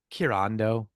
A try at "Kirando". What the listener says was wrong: You were giving it way too much oomph.